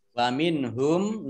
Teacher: Mari. Wa minhum nun sukun bertemu dengan huruf ha, bacaan idhar dibaca jelas